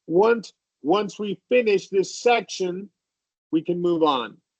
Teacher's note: I emphasize finish, I go up for the pause, and then I go you can we can move on.